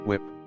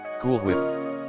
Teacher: Certain people will overemphasize the H in words with a WH prefix.